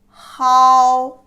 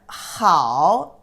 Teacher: For example, the initial he, final, ao, put together, he, ao, hao. Hao is the first tone, and hao is the third tone